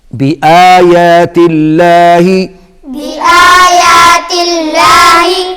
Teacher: اللہ کے نام سے پہلے زیر ہے تو زیر کی شکل میں کیا ہوگا؟ باریک. شاباش، باریک پڑھا جائے گا